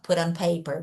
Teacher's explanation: Aqui ela fala put on paper, mas a tendência do americano é falar put on paper, que é aquele flap T que eu falei pra vocês, que é o T com som de R